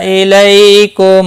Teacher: لئی یا لین ہے، تھوڑا نرمی کے ساتھ کھینچ کر ادا کریں گے